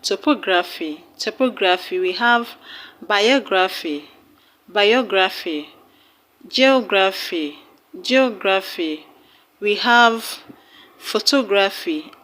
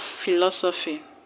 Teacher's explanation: All these words have their stress on the third syllable from the end of the word.